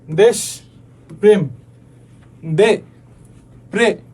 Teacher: তৎসম শব্দের প্রথমে ব্যঞ্জন ধ্বনির সঙ্গে যুক্ত এ কি হয়, সংবৃত হয়।